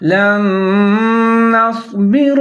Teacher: لام کے بعد نون ساکن ہے، اس کے بعد نون پھر مشدد ہے، تو دونوں نون کو جب ساتھ میں ملا کے پڑھیں گے تو یہاں پر ادغام کریں گے